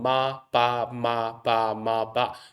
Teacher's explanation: the difference between the M and the B is that the M has the nasal sound, the B doesn't. So if we're going in quick successions between the M and the B, it's basically the soft pads going up and down, closing the nasal passage.